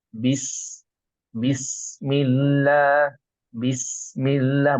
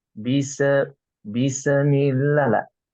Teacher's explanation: karena huruf Sin ini bukan huruf Qalqalah ya maka kita bacanya mengalir saja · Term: bukan Qalqalah